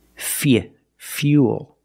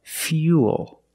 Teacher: We have the same long oo sound after the y, so it's u, plus the dark L.